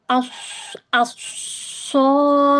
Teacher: Jadinya yang melipat gandakan sifat saofirnya ini ee dia desisanya terlalu berlebihan. jadinya terdengar seperti lebih berisik seperti itu.